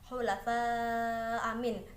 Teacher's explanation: bacaan mad wajib muttasil dikarenakan adanya Mad bertemu dengan Hamzah dalam satu kalimat panjangnya lima harakat atau dua setengah Alif